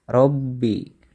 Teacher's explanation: ro ini disebut ro tafhim atau ro-nya dibaca tebal